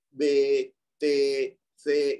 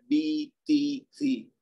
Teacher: اے کی آواز کو ای میں کنورٹ کر دینا ہے